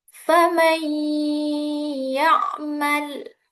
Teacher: Fam ya'malnya dibaca dengung bukan faman ya'mal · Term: idgham bighunah